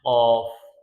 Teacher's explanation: قاف موٹے حروف میں سے ہے، اس کو موٹا کر کے پڑھتے ہیں